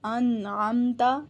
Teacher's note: کلکلے کا مطلب ہوتا ہے آواز کو ہلانا، جنبش دینا، یہاں پر نون اور میم کے اوپر آواز نہیں ہلے گی۔ انعمت، اور نون کے اوپر ناک کے اندر آواز بھی نہیں جائے گی۔ انعمت، غنہ نہیں ہوگا، اخفا نہیں ہوگا۔